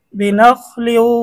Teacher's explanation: তানবিনের পরে ঈদগামে বা গুন্নার হরফ ওয়াও আসছে, গুন্না সহ মিলিয়ে পড়তে হবে